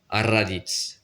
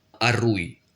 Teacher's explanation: le R qui est roulé et selon si on l'écrit une fois ou deux fois il faut le prononcer court ou long